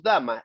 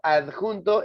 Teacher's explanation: la D es oclusiva. O sea, suena pero no sale el aire.